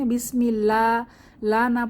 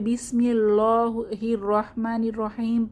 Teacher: হয় না যেমন এই যে বিসমিল্লাহির রাহমানির রাহিম এর স্থলে যদি আল্লাহর লামকে চিকন বা বারিক করে পড়া না পড়ে মোটা করে পড়া হয় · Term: লাহানে খফি